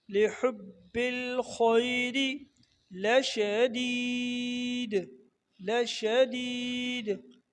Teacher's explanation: लिहुब्बिल खैरी, हा को बारीक पढ़ना है पहले वाले को, दूसरे वाले हा को, खा को मोटा पढ़ना है